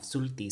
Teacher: But sulti doesn't have that glottal stop, sulti.